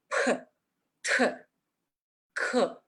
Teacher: las consonantes P, T, K en chino son aspiradas y se producen con un fuerte golpe del aire